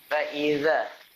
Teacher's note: Ujung lidah sentuh gigi gunting atas. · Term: zal